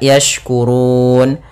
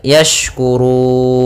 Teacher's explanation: Maka awalnya yashkuruna menjadi yashkurun, nunnya ikut mati. Cara membacanya itu boleh kita panjangkan 2 harakat, yashkurun. Boleh 4 harakat, yashkurun. Boleh pula 6 harakat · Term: mad arid disukun